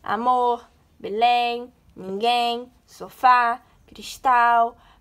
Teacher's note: a sílaba tônica dessas palavras é a última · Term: oxítonas